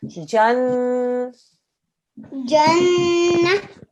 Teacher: It's a noon mushaddad. So we're going to do 2-second nasal sound.